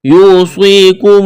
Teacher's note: واو ساکن سے پہلے پیش ہے، واو مدہ ہے، الف کے برابر کھینچنا ہے، صاد کو موٹا کرنا ہے، سٹی کی آواز پیدا کرنی ہے۔